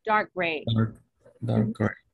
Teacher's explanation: I don't release the sound of the letter K because the next word starts with a consonant sound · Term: unreleased sound